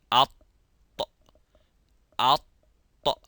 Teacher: the middle part of the tongue goes to the roof of the mouth, as well as the tip, which is called the ras. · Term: itbaq